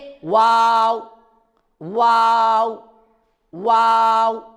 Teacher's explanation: تو واو کا مخرج ہے، ہاں واو کا مخرج ہے یہ جو ہونٹ ہے، جب یہ تھوڑے سے کھلے رہیں گے اور آخر میں جا کر جب گول ہوں گے تب واو نکلے گا، یعنی کہ واو واو واو۔ آخر میں ہونٹ کو گول کرنا ہے اور شروع میں جب ہم نکالیں گے تو منہ کا جو حصہ ہے وہ تھوڑا سا کھلا رہے گا اور آخر میں ہونٹ گول رہے ہوں گے تب واو ادا ہوگا